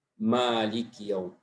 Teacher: Wa takunu musahibatan lin nuni wal mim, itu ya menyertai atau mendampingi huruf nun dan mim fi kulli ahwal, dalam segala kondisi, mau dia fathah, mau dia kasrah, mau dia mati, semuanya artinya ada dengungnya. Mim berharakat ada dengung, tapi dengungnya tingkatan bawah.